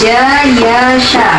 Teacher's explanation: Kita rasakan sendiri pasti tengah lidah kita naik ke langit-langit.